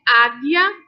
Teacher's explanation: Já em águia, nós não percebemos o som da letra U